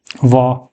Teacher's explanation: दंत और ओष्ठ है, होठ मिलेंगे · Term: दंतोस्थ